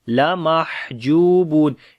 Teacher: So we say Yawma idhil lamahjubun. On the ha we make hams quality, the continuation of our breath, and the sound becomes weak.